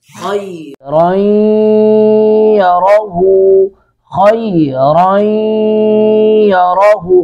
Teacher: درمیان میں جو نون کی آواز ہے اس کو ناک میں لے جائیں گے، ادغام باغ نہ بن جائے گا۔